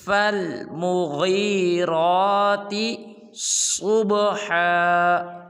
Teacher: غین یا زیر غی ہے، اس کو لمبا نہیں کرتے، غین کو پر نہیں کرتے، را کو پر نہیں کرتے